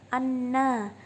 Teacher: Pada kata di atas ada dua hukum tajwid, yaitu guna dan mat tabi'i. Guna dalam surat Abasa ayat 25 ini sebab ada nun ditasydid. Ketika dibaca huruf nunnya harus didengungkan.